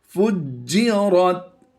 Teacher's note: रा को पुर पढ़ते हुए हमने ता के साथ मिला देना है